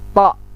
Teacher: To, lidahnya mundur sedikit ke pangkal gigi atas.